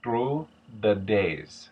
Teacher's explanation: TH, the hard TH, becomes a T. The voice TH, becomes something closer to a D. So instead of through the days, it becomes something closer to through the days.